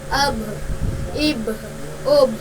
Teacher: جب ان پر جزم ہو تو ان کے مخرج ٹکر کھا کر الگ ہو جاتے ہیں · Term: قلقلہ